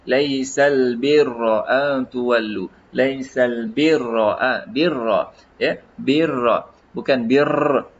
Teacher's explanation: Ra ini kita tak tebal, tak getaran, dia tebal, dia ada getaran tapi getaran dia bukan berpanjangan, dia hanya mungkin dalam beberapa getaran sahaja. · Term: huruf ra